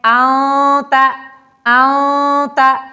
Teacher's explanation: آنتا نون ساکن ہے اور اس کے بعد حروف اخفا میں سے تا آیا ہوا ہے، تو لہٰذا ہم نون کو چھپا کے پڑھتے ہیں